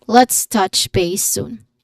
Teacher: soon has a long ooh sound